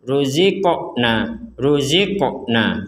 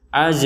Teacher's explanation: huruf qaf yang sukun kita wajib bacanya mental atau dipantulkan